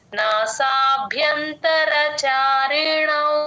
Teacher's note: అణకి ఔత్వం చారేణౌ ఇక్కడ యూజువల్ గా ఏం చేస్తారు నాసాభ్యాంతర అని చెప్పేస్తారు భాకి దీర్ఘం పెట్టి అలా చెప్పకూడదు